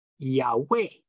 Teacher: So the emphasis is on way, Yahweh.